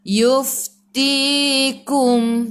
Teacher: Dan fa juga hurufnya, sifat hurufnya hamas. Kena keluar angin.